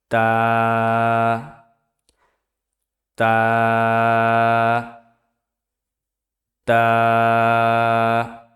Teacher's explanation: তা উচ্চারিত হয় জিহ্বার আগা সামনের উপরের দুই দাঁতের গোড়ার সঙ্গে লাগাইয়া